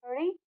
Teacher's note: जब हम री का प्रयोग करते हैं तो जीभ के अगले भाग को हम मोड़कर मूर्धा के स्थान पर लेकर आते हैं